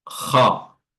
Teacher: huruf kha, ya, karena dia bukan tarqiq, ya, bukan fathah yang seperti huruf-huruf tipis yang lain, dia adalah huruf isti'la, itu dibaca dengan tafkhim tebal.